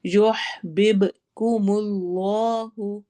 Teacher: युह ह की आवाज ठहराएंगे हलक में, दरमियान वैसे भी हलक के दरमियान से अदा होता है ह , बिब में कॉफ सॉरी बा पर कलकला हो रहा है, · बा पर कलकला हो रहा है, एको साउंड होगी